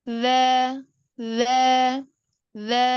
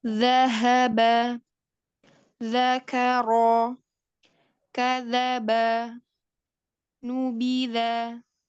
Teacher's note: Yang zal ini adalah makhrajnya ada di ujung lidah yang bertemu dengan ujung dua gigi seri atas. Nah, maka agak keluar sedikit. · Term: huruf zal